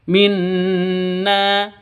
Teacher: Non tasydidnya berdiri sendiri. Artinya gunnah musyaddadah, dengung 2 ketukan.